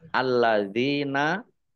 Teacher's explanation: depannya kasrah lam fathah berdiri Mad thii panjang dua harakat alladzina lamnya dibaca dobel ada tasdidnya Dal kasrah Ya Sukun Mad thobii panjang dua harakat alladzina Ini